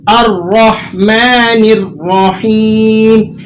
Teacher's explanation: حمزہ کی جو ادائیگی یہاں ہوگی وہ آپ نے اسے باریک پڑھنا ہے اور را کو آپ نے یہاں پر کر کے پڑھنا ہے، الرحمن الرحیم۔ الرحیم لفظ کے اندر جو را ہے وہ را آپ نے پر کر کے ادا کرنا ہے